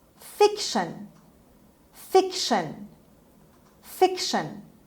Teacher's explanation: the stress is on the first syllable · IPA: /ˈfɪkʃən/